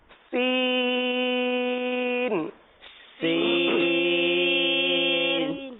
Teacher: اور اب ہم جو حرف پڑھیں گے سین، اس میں خالص سیٹی کی آواز آئے گی